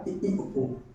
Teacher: समृत का जब हम उच्चारण करते हैं तो हमारा मुख लगभग बंद के समान रहता है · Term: संवृत